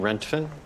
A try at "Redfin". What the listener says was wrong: But you're saying rentfin. It's red fin.